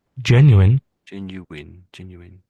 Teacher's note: All I'm hearing is Jen, and then you're saying you in. I think you're missing out the W sound. It's only very subtle.